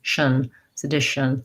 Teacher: We almost have no vowel there. We tend to go right from the sh to the n, shun, sedition, because it's short and unstressed. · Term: tion ending